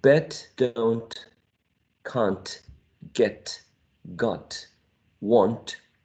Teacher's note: all of them end in voiceless alveolar plosive sound